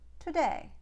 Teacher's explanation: a hungarian won't throw away that first syllable a hungarian will pronounce that word today